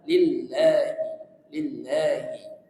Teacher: ada satu tasdid yaitu di lafaz lam jalalah lillahi lillahi maka dari itu juga harus ditekan